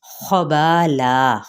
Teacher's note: حرکت کو لمبا نہیں کریں گے، میم پہ اظہار شفوی، خبالا خا حروف مستعلیہ میں سے ہے، کھردری آواز سے اس کو ادا کرنا ہے